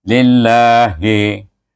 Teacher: lillahi baca dengan nipis sebab baris bawah lam itu dalam nama Allah.